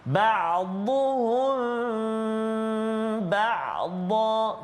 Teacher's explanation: Mim mati bertemu dengan ba. Ikhfa syafawi dengung dengan kadar dua harakat, rapatkan bibir kita.